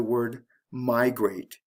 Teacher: the stress is on the first syllable with migrate